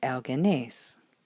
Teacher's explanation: the intervocalic sigma goes away, and we get the contraction